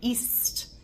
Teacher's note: the tongue doesn't really hardly move at all